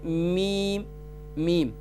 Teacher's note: میم کا مخرج یہ ہے دونوں ہونٹوں کے خشک حصے سے ادا ہوتا ہے. میم دونوں ہونٹوں کے خشک حصے سے ادا ہوتا ہے.